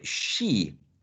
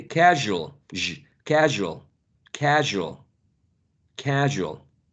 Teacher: both of them are articulated by raising the front part of the tongue not the tip the front part of the tongue and you press the area in between the alveolar Ridge and the hard palate that's why it's called post alveolar past the alveolar Ridge and